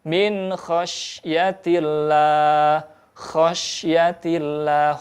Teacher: Maka dibaca jelas salah satunya bila mana bertemunya nun sukun dengan kha. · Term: idhar